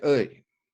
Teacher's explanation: When you say œil, the last sound is kind of a Y sound. So it's an E followed by the start of a Y sound.